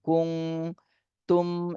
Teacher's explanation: নুন সাকিনের পরে ইকফার হরফ তা এসেছে, এজন্য এই নুন সাকিনে ইকফা গুণা করতে হবে। কুং তুম, এই মিম সাকিনেও গুণা করতে হবে।